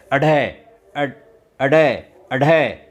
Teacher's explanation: जब इनका उच्चारण हम करते हैं तो ऐसा लगता है कि हमारी जीभ जो है वह इस ध्वनि को बाहर फेंक रही है · इनके उच्चारण में जीभ की जो नोक है वो झटके के साथ गिरती है, वह बाहर फेंकती है। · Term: उत्क्षिप्त व्यंजन